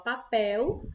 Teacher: a sílaba mais forte é o pel, certo? Então, como a sílaba mais forte é pel, é a última sílaba da palavra, por isso a gente chama de oxítona, certo?